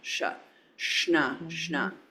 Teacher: It's a cerebral sh